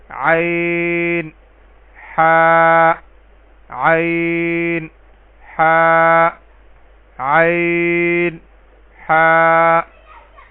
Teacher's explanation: اسی طرح عین ہا، عین ہا. یہ وسط حلق سے یعنی حلق کے درمیانی حصے سے ادائیگی ہوگی